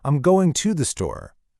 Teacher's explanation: The words to, and the almost always get squished down to that quick, unstressed schwa.